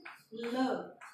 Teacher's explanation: ल मतलब हमारी जीभ जो है वो हल्की पीछे मुड़कर जाती है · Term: पार्श्विक ध्वनि